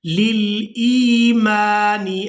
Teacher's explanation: اب یہ جو آپ زیر دیکھ رہے ہیں یہ حمزہ کے نیچے ہے، لام کے نیچے نہیں ہے، حمزہ کے نیچے ہے، اور حمزہ کو ہم نے یا ساکن کے ساتھ ملانا ہے اور کھینچ کر ادا کرنا ہے